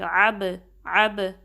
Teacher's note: با پہ کلکلا ہوگا، تھوڑی سی جو آواز ہے پلٹ کے آئے گی